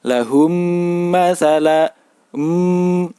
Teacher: masalah jadi antara bibir atas dan bibir bawah ini sama-sama menempel membacanya seperti Huruf mim yang bertasydid yaitu sedikit ada dengung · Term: Idgham Mimi